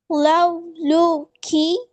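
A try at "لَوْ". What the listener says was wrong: லவுட தடிப்பம் போதாது. லவுட தடிப்பம் போதாது. ல ல இல்ல வா. வானத்தை நோக்கி வரணும். லவ் லா.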